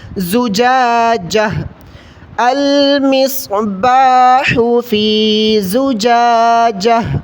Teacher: گول تا پر جب بھی ہم وقف کریں گے تو گول تا کو وقفن کی صورت میں ہا پڑھا جاتا ہے۔